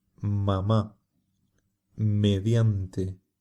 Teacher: La letra M tiene un sonido muy nasal. Se consigue cerrando los labios y dejando que el aire salga por la nariz.